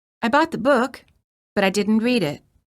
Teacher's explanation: the second sentence contains Rising intonation indicating that the thought has not ended